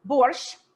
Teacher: when you say borsch in russian it almost sounds like you're ending with the letter t